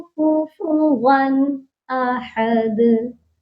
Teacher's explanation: دال پر لاسٹ میں پھر قلقلہ کرنا ہے کیونکہ دال پر آ کر ہم رک رہے ہیں، دال کو ساکن کر رہے ہیں۔